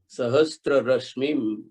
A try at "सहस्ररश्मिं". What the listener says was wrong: सहस्त्र नहीं, सहस्र।